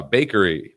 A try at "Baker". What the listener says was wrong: no Baker not Bakery Baker